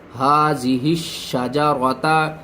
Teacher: شین کو 2 بار پڑھیں گے، سختی کے ساتھ پڑھیں گے، درمیان میں الف اور لام کو چھوڑ دیں گے